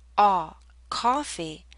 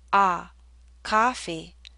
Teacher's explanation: the tongue is pushed backward more if you hear ah coffee the lips are more relaxed and the tongue may be more forward